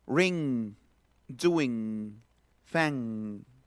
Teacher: Es la ñ de mango, se le llama n velar. Ñ, no es n, sino es ñ, así, atrás, en la raíz de la lengua y el velo del paladar.